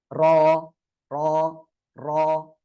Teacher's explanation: জিহ্বার আগার পিঠ, পিঠ মানে এটা উপরে তালুর সাথে লাগবে